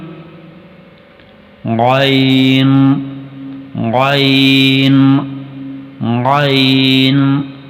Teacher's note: حلق کے جس جگہ سے حرف خ کی آواز ادا ہوتی ہے بالکل اسی مقام سے ہی حرف غین کی آواز بھی نکلے گی